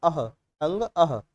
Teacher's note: विसर्ग का उच्चारण स्थान भी कंठ होता है